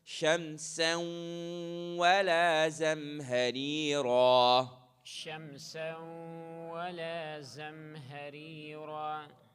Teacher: With the hunna, what's happening is you are holding it for 2, and the sound is coming through your nasal passage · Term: ghunna